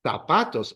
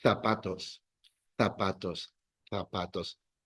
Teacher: In Latin America, S and Z, same sound.